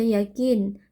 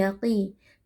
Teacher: Huruf qof huruf tebal. Kita baca dengan mengangkat pangkal lidah ya. Jadi qof kasrah itu tidak menjadi tipis ya.